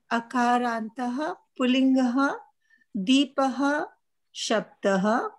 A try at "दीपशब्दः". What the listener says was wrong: deepah or deepa shabdah that aha should not come when you saying the shabda